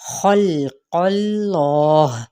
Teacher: खा पुर है, लाम को हिलाना है, लाम बारीक है, कौफ पुर है